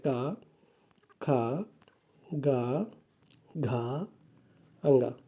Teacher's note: का वर्ग के सभी वर्णों का उच्चारण स्थल कंठ होता है